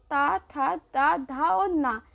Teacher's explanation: जो त थ द ध और न ये होते हैं दंत व्यंजन